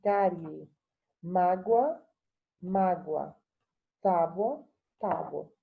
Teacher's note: Pode ser uma proparoxítona aparente é que quando você pronuncia, a sílaba tônica está na antepenúltima